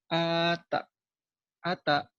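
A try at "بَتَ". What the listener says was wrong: Kok ada? Ini mah ba lagi. Bata. Kok jadi ada? Ayo lagi. Bata.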